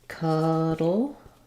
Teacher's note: in cuddle, we have the schwa vowel. So it sounds like cuddle.